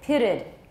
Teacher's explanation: it ends with a t so we add another syllable we put a schwa in there